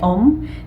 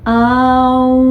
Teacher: Entonces, el sonido Om, que es el sonido original del universo según los Vedas, proviene de un diptongo. No es O-M, Om, sino que es el diptongo de A-U y ya con la consonante M. Entonces es Aum, conformado de esos tres sonidos y luego silencio.